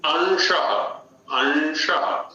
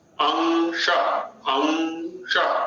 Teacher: अनुस्वार एक स्वतंत्र व्यंजन है और विशुद्ध नासिक्य है, नासिका से उच्चरित होने वाला है।